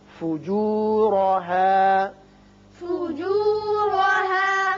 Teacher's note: را کے اوپر زبر ہے، پر پڑھیں گے